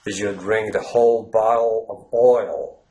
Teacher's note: with the dark L you it's it's almost like gagging